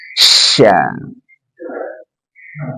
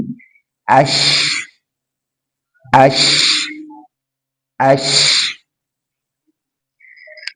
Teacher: Dan ingat dia punya sifat tafashi, semburkan dengan udara.